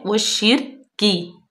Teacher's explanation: वाव को डायरेक्ट हम शीन में मिलाएंगे, इसको हम वल शिरकी नहीं पढ़ेंगे। शीन जो है उसको सख्ती से पढ़ेंगे, शद्दत भी है और उसके नीचे जेर है।